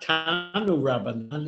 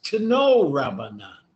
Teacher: But in Aramaic, it's not tanu rabbanan, it's to know rabbanan. Instead of an u, it's an o.